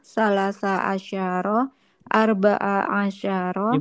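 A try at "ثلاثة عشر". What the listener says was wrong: Dibaca aja terakhirnya. Salasata arba'ata gitu ya. dibaca.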